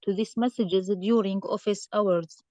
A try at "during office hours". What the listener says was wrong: So here we have comma. So don't stop. You need to just pause a little.